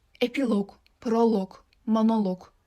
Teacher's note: Bu sözlərdə vurğu loqun üzərinə düşəcək.